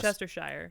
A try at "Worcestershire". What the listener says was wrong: you're not supposed to pronounce the shire like it like in like New Hampshire yeah it's like Worcestershire